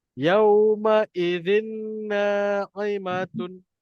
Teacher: Huruf bertanwin berjumpa dengan huruf nun. Maka kita kena masukkan bunyi N tu ke dalam huruf nun dan kita dengungkan dia. Dia akan jadi zinna. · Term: masuk dan dengung